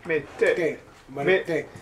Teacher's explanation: You can just say it can be soft, but it has to be unaspirated. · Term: No aspiration